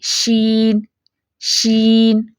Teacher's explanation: شین کی آواز جو ہے زبان اور تالو کے درمیانی حصے میں پھیل جاتی ہے. دیکھیں شین، شین.